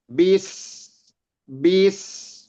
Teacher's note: Sinnya itu jalan terus gitu, nggak berhenti. Itu namanya rokhawah, mengalir.